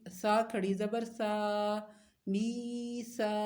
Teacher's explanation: سا کھڑی زبر ہے، اس کو بھی ایک الف کے برابر لمبا کریں گے